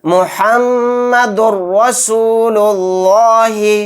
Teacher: دال کو را میں ڈائریکٹ ایک دم ملائیں گے، جلد پڑھیں گے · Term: ادغام بلا غنہ